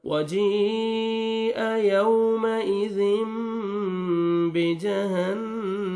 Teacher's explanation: वजीअ यौमइज़िम, वाव लीन है, नरमी से अदा करेंगे। तनवीन के बाद बा आ रहा है तो यहाँ पे आपने इख्फा करना है और तनवीन के नून को मीम में चेंज करेंगे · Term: इक़लाब